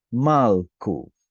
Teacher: It had a short stressed vowel plus a case ending.